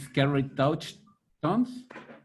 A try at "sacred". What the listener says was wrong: Sacred. Not scared. It's exactly the same word if you change the C and the A. So it's S-C-A-R-E-D. That's scared. This is sacred.